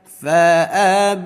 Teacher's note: Tinggal lihat cara bacanya nih, pan 5. Panjangkan saja bunyi ba, ketuk 5 kali. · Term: mad jaiz